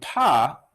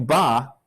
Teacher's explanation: do paw feel what happens here so do it really slow you feel your lips release before your vocal cords start vibrating